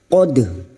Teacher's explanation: sukun dal yang secara alami mati di tengah kalimat disebut qalqalah sughra. Jangan lupa memantulkannya: qad. Qad khiradzina.